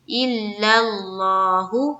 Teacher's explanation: لفظ اللہ کے لام کو منہ بھر کر پڑھیں گے